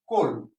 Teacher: এখন আমরা জানি উচ্চারণের আগের যে পূর্ববর্তী যে ক্লাসের যে ক্লাস থেকে আমরা জানি যে কোন শব্দের শুরুতে যদি অ থাকে এবং পরবর্তী বর্ণের সাথে যদি জ ফলা যুক্ত থাকে তাহলে প্রথম বর্ণটির সাথে যে অ আছে এই অটি সংবৃত উচ্চারণ অর্থাৎ ও হয়ে যায়